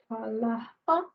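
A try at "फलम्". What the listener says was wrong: Phalam, not phala. Phalam. Etat phalam.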